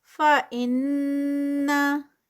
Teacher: इन पे गुन्ना है, गुन्ना 2 काउंट्स का